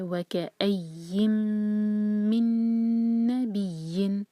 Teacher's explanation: ہر میم اور نون پر جب شدہ ہے تو ہم اس کو ہولڈ کریں گے